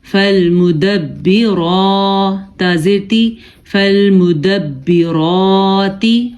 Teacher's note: فا زبر لام فل, میم پیش مو, فالمو, دال زبر با دب, فالمدب, با زیر بی, فالمدبی, را کھڑی زبر را, فالمدبرا, تا زیر تی, فالمدبراتی. را کو ہم نے پر پڑھا ہے کیونکہ را کے اوپر کھڑی زبر ہے